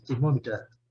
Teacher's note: E esse R do inglês aqui, ele é bem sutil, ele nem aparece. Ele é bem assim, thermometer, certo?